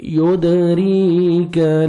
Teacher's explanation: يدريك دال حروف قلقلہ میں سے جو 15 لیٹرز ہیں، قاف طا با جیم دال، جب بھی یہ ساکن آتے ہیں تو ڈبل ساؤنڈ آتا ہے۔ را کے نیچے زیر ہے، را کو باریک کرنا ہے اور 1 سیکنڈ کھینچنا ہے